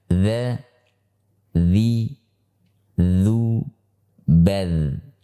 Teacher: Huruf dal itu dikeluarkan melalui ujung lidah yang bertemu dengan ujung gigi seri atas